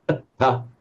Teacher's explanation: So atta with the dental T, atta, which means your objective, your aim, your goal